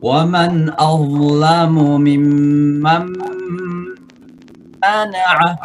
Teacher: membaca waman azlamu bukan za di situ tapi dha